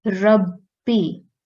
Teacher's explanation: For example, this word Rabbi, we'll break this word into 2 steps. First, we will pronounce the word Rab, and we will stress on the letter ba, because ba has a shadda on top, and then we will pronounce the kasra, B, Rabbi. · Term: mushaddad letter